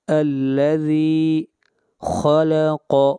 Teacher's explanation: قاف اور خا حروف مستعلیہ میں سے ہیں، دونوں کو موٹا پڑھا جائے گا